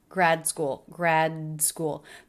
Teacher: this is really common for ending D's with when they're followed by a word that begins with a consonant they're not released they're subtle